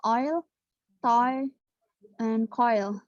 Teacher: start with the tongue at the back and the lips are round, o, and slide to e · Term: diphthong